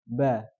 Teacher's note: Adapun sifatul huruf, bagaimana huruf itu keluar. Misalkan huruf ba, kita sudah tahu tempat keluarnya di mana? Kedua bibir, ba. Nah, bagaimana huruf ba itu keluar?